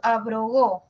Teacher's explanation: La B es una oclusiva. La R es una vibrante, oclusiva, vibrante, y luego una oclusiva. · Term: oclusiva, vibrante, oclusiva